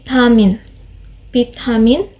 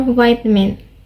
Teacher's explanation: bamin or vitamin in this second example we can hear that the letter V is not being sounded instead it is replaced with the letter B